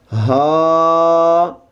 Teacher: اس میں سانس کی آواز نہیں آئے گی بلکہ آپ کا سانس سینے سے سیدھا منہ سے باہر آ جائے گا. سینے سے نکلتا ہوا منہ سے سیدھا باہر آ جائے گا.